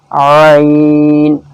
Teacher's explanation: عین حلق سے نکلے گا، حلق کی طرف سے، حلق کے بیچ سے